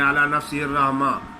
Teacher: جب آخر میں ہا ساکن آ جاتی ہے تو ہا کی آواز نہیں نکالی جاتی، الف کی آواز نکالی جاتی ہے